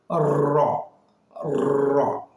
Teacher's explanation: আমরা অনেকেই বলে থাকি জিহ্বার আগার উল্টা পিঠ, কিন্তু উল্টাতে গেলে হরফের উচ্চারণটি বেশি প্রকম্পিত হয়ে বাড়ি খেয়ে ওটাকে উচ্চারিত হবে না। আমরা বলবো জিহ্বার আগার পিঠ র, একটু প্রকম্পিত হবে